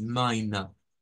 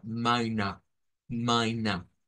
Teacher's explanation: Miren, no suena la R final, es mina. Con esa A retraída.